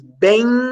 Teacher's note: esse ein é nasalizado Ou seja é um som nasal uma vez sendo um são nasal é um ditongo nasal vamos